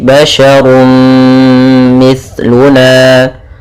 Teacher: Kemudian basharun mithluna, pada lafal basharun mithluna di sini ada fathatain, ya maaf, ada dhammatain bertemu dengan mim, yaitu kita namakan dengan idgham bi gunnah, yaitu cara membacanya adalah masukkan suara runnya kepada mim, maka kemudian menjadi basyarum mithluna